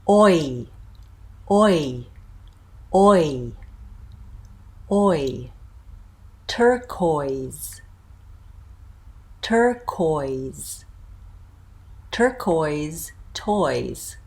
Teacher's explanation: in front oh so notice a little bit rounding there and ending with my lip spread